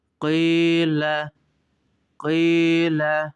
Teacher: bir elif miktarı Kaf harfini çekerek okuyoruz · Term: Medi Tabii